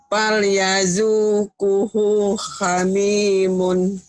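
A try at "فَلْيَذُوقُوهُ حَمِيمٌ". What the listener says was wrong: Bagus tapi kunya panjang. Falyadukuhu hamimun. Bagus, hunya pendek ini. Falyadukuhu hamimun. Falyadukuhu hamimun. Yang penting bener panjang pendek.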